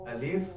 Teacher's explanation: मुंह के खाली हिस्से की हवा से अलिफ अदा होता है मतलब जुबान दाए बाए कहीं नहीं जाती कोई दा दांतों को